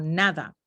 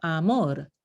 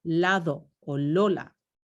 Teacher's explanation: necesitan que el ápice de la lengua toque los alvéolos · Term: apico alveolar